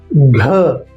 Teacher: लेकिन इस बार स्वर तंतु कंपन सहित घ महाप्राण अतिरिक्त श्वास और स्वर तंत्र कंपन के साथ